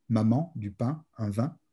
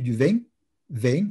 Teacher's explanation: en français standard, on va dire, la nasalisation est complète et directe